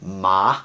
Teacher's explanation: the second tone would be ma goes up